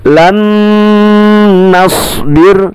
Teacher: nun sukun bertemu nun dibaca dengung. Dalam istilah ilmu tajwid disebut dengan idgham bigunna.